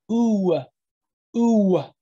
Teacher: Just naturally saying it, the W ends the vowel.